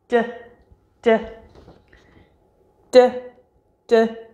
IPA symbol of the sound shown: d